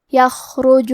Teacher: کلمت یخرج میں خا ساکن ہے تو ہمیں خا کو ظاہر کرنا ہے اور ہم حرف الخا کو تفخیم سے پڑھیں گے